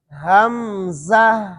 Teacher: آگے زا ہے پھر ہا ہے. حمزہ، زہ، یہ زا کے بعد ہا کو ظاہر کرنا ہے اور ہا کے اندر آواز اور سانس کو جاری رکھنا ہے